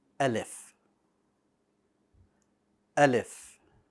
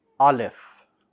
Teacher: alif should be light meaning that the back of your tongue stays flat and that will allow your mouth to somewhat open in a horizontal position